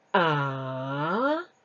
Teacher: the third tone is called the falling Rising tone so you need to read it falling Rising